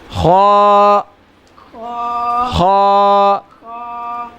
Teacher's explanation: خا حلق کے اوپر والے حصے سے ادا ہوتا ہے